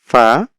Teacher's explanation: অফ আর উচ্চারণ তো আমরা তো দেখলাম যে কোথা থেকে হবে ফা উচ্চারণ হয় হচ্ছে নিচের ঠোঁটের পেট সামনের উপরের দুই দাঁতের আগার সঙ্গে লাগিয়ে